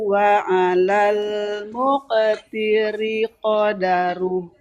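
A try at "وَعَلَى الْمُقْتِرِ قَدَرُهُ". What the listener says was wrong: Jangan muqan, tapi muqa. Wa 'alal muqtiri qadaruhu mata'an bil ma'ruf.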